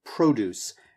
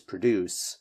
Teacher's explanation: Make sure that you have a really nice, strong emphasis on the first syllable.